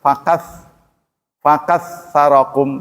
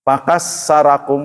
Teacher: ta itu kan menempelkan ujung lidah ke gigi atas